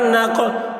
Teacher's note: قاف حروف قلقلہ میں سے ہے اور اس پر جزم ہے اس لیے قاف میں قلقلہ ہوگا